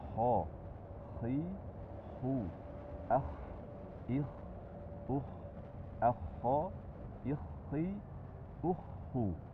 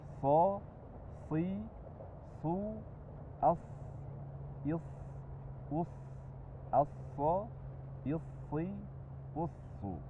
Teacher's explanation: suara menggema dalam mulut karena lidah kita yang terangkat bagian belakang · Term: tafkhim